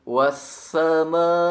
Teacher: panjangkan bunyi huruf mim dengan sedikitnya 4 harokat atau 2 alif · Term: mad wajib muttasil